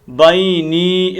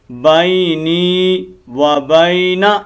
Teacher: اس یا کو تھوڑا لمبا کرنا ہے، بینی و بینا، اس نون کو لمبا نہیں کرنا. ٹھیک ہے، ہم یہ بہت غلطی کرتے ہیں، یہاں لمبا نہیں کرتے اور یہاں لمبا کر دیتے ہیں.